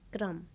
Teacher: जैसे क्रम लिखा है तो क थोड़ा सा बोला जाएगा और रा का वर्ण पूरा बोला जाएगा